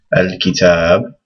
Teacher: there's a whole alif there, and this ta is pronounced with the elongation. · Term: dagger alif